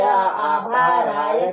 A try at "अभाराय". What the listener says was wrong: अभाराय बोलो, आभाराय नहीं,